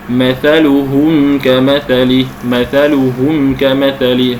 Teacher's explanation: الشفوي ان ياتي بعد الميم الساكنه اي حرف غير الباء والميم فتظهر الميم بدون غنه زائده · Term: الاظهار الشفوي